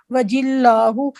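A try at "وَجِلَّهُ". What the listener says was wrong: ایک منٹ، جو اس طرح کی آ رہے ہیں نا ورڈز ہو سے پہلے والے، اس کو تھوڑا سا آپ لمبا کر رہے ہیں۔ وجلہ نہیں، ہاں وجلہ کہنا ہے۔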